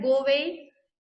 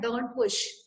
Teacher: the vowel sound made by letter A in go away and the sound made by letter T in don't push are not pronounced